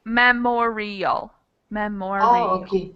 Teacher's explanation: you're correct that it's on the second syllable but it actually has four syllables in it